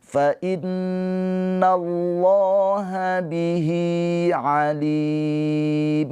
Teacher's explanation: Maka yang ini tadinya mad tabi'i menjadi mad arid lis sukun. Mad arid lis sukun dibaca panjangnya boleh 2, boleh 4, boleh 6 harokat.